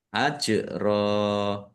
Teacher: Fathah tanwin alif karena waqaf dibaca fathah dan panjang dua harakat. Namanya mad iiwad. · Jim sukun bacaan qalqalah dibaca memantul ditampakkan pantulannya. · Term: bacaan kolkolah